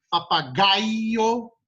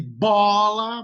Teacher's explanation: Papagaio, mais forte é o gai, e bola, mais forte é o bó, ambas são paroxítonas